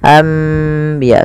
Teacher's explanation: Membalikkan suara nun menjadi suara mim. Awalnya anbiya Allah karena bertemu dengan ba maka diganti dengan mim. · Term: iqlab